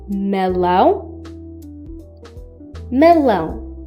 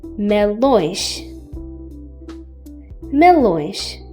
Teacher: You can notice a slightly nasal sound when pronouncing these words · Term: nasalizer